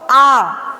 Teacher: आपको आ, इसमें टाइमिंग ज्यादा, मतलब उच्चारण के समय में हमारा मुंह पूरा खुले और बोलने में समय ज्यादा ले, वो हमारा दीर्घ स्वर होगा